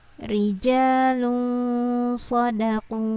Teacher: Jadi di sini tidak boleh tanwinnya itu berbunyi jelas, tapi samar dia. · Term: ikhfa